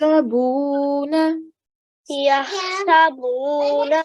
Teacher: we stretched out the sound of the ba for 2 seconds